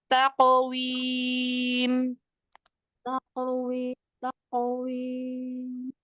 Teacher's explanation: Ada qaf sukun, qalqalahnya tebal.